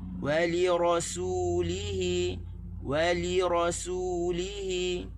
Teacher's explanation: Waw tak tekan di li, tekan di ra, kita tekan di hi. Ada 3 tempat tekan.